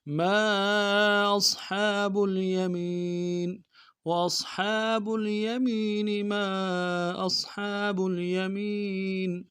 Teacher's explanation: حمزہ کو صاد کے ساتھ ملانا، صاد کو موٹا کریں گے، ہا کو گہرائی سے ادا کریں گے. گہرائی سے ادا کرنا ایک الف مقدار میں کھینچنا بھی ہے، اور یمین میں یا کوئی میم کو یا کے ساتھ ملانا، یا مدہ ایک مقدار میں کھینچیں گے.